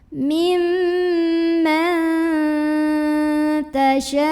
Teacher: Nah, habis baca panjang jangan lupa pakai nabar. Jadi agak ditekan ke makhraj huruf hamzah, dinaikkan intonasi.